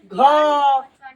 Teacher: तो कंठ से आवाज आ रहा है